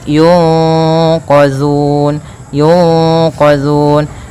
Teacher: Cara membacanya yaitu suara nunnya disamarkan kepada huruf qaf. Yunqa ditahan, kemudian langkah selanjutnya ditahan gunnahnya. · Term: ikhfa